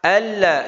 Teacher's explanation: Nun ketemu lam enggak perlu anlai tapi al nun hilang. Nun enggak usah terasa suaranya langsung ke lam. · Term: idgham bila ghunah